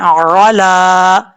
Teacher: आइन को अपने मखरज से अदा करना है, हमजा की आवाज नहीं आनी चाहिए